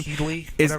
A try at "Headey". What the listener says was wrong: there's no L in it.